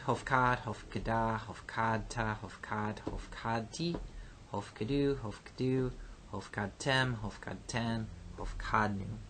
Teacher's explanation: instead of an E-class vowel in the Hif feel, we have an O-class vowel for the Ho-fall